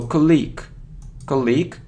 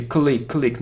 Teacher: the stress is on the first syllable and we have the sound e